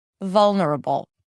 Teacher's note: the first syllable is more stressed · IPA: ˈvʌlnəɹəbəl